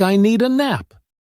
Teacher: It often sounds like I need a nap. The words need and a connect so smoothly that the D sound blends in. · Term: linking sounds